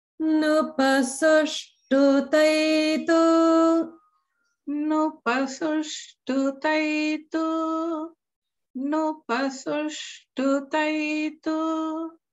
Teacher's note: notice that nu is middle and then pa goes down.